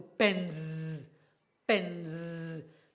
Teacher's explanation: If you take your index finger and your thumb and you place them against your throat and try to articulate the N, you will see your throat will vibrate. So, so if you add S there, the S is supposed to be Z.